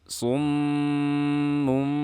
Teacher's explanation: Ketika kita melihat tanda seperti ini disebut tanda iqlab. Saat nun mati atau tanwin bertemu dengan ba, diganti suara tanwinnya menjadi suara mim.